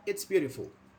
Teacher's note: We make it fall. So it's like falling intonation, like the plane wants to land.